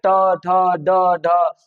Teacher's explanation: तो जीभ लगभग दांत के पास लगती है तब वायु वहां जाकर टकराती है। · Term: मूर्धा